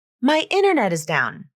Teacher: they're dropping the T sound from internet and this makes the sentence sound more smooth connected and effortless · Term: nasal flap